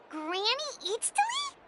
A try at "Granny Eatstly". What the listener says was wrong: Yes, Granny Eatstly. But emphasis on Eatstly, not Granny.